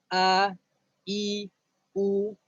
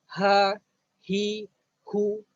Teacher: asalkan dia huruf hamzah dan juga huruf ha, maka tempat keluarnya adalah di bahagian pangkal halqum